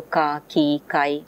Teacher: So in this case, ka is a velar, and the velarity, the velar consonant combines with the vowel to become a syllable